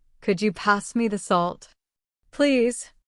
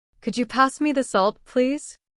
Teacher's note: listen to the way my voice rises on could you and falls gently at the end